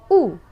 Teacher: is a high back rounded vowel